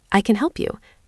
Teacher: The word can in positive sentences is usually reduced to kun with a very weak vowel sound.